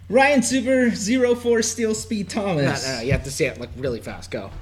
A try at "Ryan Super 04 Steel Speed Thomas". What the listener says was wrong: No, you have to say it like really fast. Go.